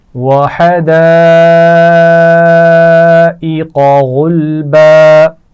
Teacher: حدا بڑی مد ہے اس کو زیادہ کھینچ کر پڑھیں گے. غلبا غین کو موٹا پڑا جائے گا.